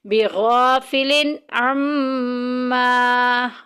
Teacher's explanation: تنوین آ گئی، تنوین کے بعد عین اظہار کے خاندان میں سے ظاہر کر کے پڑھیں گے